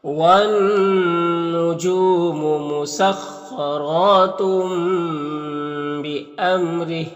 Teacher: یہاں پر تنوین کے بعد با ہے تو تنوین کو اس چھوٹی سی میم سے بدل کر غنہ اور اخفا کے ساتھ میں پڑھیں گے، اس کو اقلاب کہتے ہیں. · یہاں پر میم میں ظاہر شفوی ہوگا، میم کو ظاہر کر کے جلد پڑھیں گے، را کے نیچے زیر را کو باریک پڑھیں گے. یہاں پر وقف کریں گے تو یہ کھڑی زیر سکون سے بدل جائے گا، تو اس طرح سے پڑھیں گے.